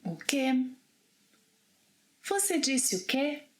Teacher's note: the only place in which que cannot be pronounced as ki, it must be que, is when que is the last word in a question